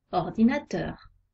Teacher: on accentue un peu teur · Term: accent tonique